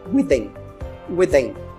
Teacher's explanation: Que é com th, então é with in. Sendo que a gente não fala separado, fala junto, vai ficar within